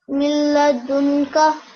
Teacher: And in this case, after the noon sakin, there was a lam mushaddid. Therefore, this noon became silent, and that meant you had to join the letter before the noon sakin with the lam mushaddid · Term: idgham